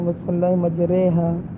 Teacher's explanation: را کے اس حرکت کو زیر سمجھ کر ہم را کو باریک پڑھیں گے